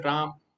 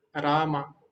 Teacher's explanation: जो हलंत है उसका उच्चारण बहुत कम समय के लिए होता है वहां पर बंद हो जाता है लेकिन यहां पर क्योंकि हलंत नहीं है यहां पर पूरा शब्द